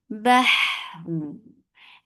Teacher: Ha should be from your throat. It has rakhawa. It has hams. Bah. And after giving rakhawa on ha, you are giving tawassut at the end.